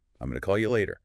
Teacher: going to for future action often becomes gonna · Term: reductions